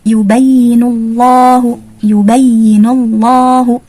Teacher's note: Kemudian setelahnya adalah lafzul jalalah atau lafaz Allah, maka kita baca lafzul jalalah ini dengan tebal atau tafkhim